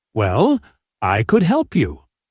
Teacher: Fall rise. Intonation. Your voice goes down then up again.